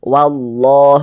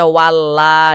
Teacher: Cuman di sini yang kita temui fathah. Kalau ada lafaz Allah sebelumnya ada harokat fathah, maka lafaz Allahnya dibaca tebal, baca tabkhim. Sehingga ini dibaca wallah, jangan dibaca walla, jangan, tapi ditebalkan lafaz Allahnya.